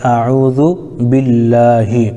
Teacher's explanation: لفظ اللہ کے لام سے پہلے با کے نیچے زیر ہے، اس لیے لفظ اللہ کے لام کو ہم باریک پڑھیں گے